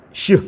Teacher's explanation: Shin itu tafasyi dia. Seperti orang ngusir kucing atau ngusir ayam, syuh gitu ya.